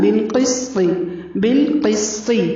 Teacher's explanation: قاف کو پر پڑھنا ہے، سین کو باریک پڑھنا ہے، طا کے نیچے زیر ہے، طا کو لمبا نہیں کرنا.